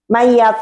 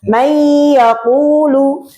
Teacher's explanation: Padahal itu harus ada dengung ya. Minimal satu ketukan lah gitu ya. Harus ada bedanya dengan Iya, gitu loh.